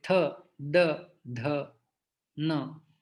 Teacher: त वर्ग होता है दंत, तो हमारे दांत को हमारी जिह्वा स्पर्श करती है।